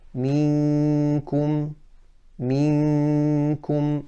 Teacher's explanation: So we say minkum, minkum, because my tongue is touching, is closing the makhraj of the mouth, and the entire sound is coming from nasal cavity. Minkum and min qabl. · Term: ikhfa